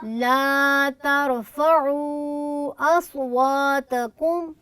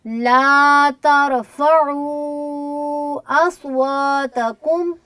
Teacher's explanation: أصواتكم यहाँ पर वाव आपने अच्छी मद नहीं की है बेटे, ये वाव मद्दे असली के फ़ौरन बाद हमज़ा दाखिल हो रहा है और इसको चूँकि ये मद्दे मुनफसिल है तो 2 से 2.5 अलिफ कम अज़ कम इसकी मिकदार जो है उसको आप ज़रूर मद करें